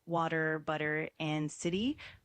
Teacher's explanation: In American English, a T between vowels often sounds like a soft D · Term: flap T sound